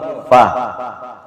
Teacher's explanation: Yang betul adalah gigi bibir, gigi atas, bibir bawah.